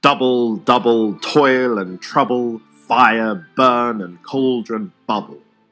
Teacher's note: the two-syllable long trochee, a stressed syllable followed by an unstressed one. The trochees in these lines from Shakespeare's Macbeth lend an ominous and spooky tone to the witch's chant.